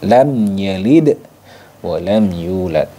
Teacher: Selain mim dan ba maka dibaca izhar syafawi jadi mim sukunnya itu dibaca jelas · Jadi mim sukunnya itu dibaca jelas, lam yalid wa lam yulad, tidak boleh didengungkan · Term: idhar syafawi